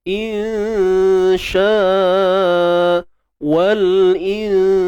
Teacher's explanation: Nun dengan shin kan tengah lidah naik ke langit.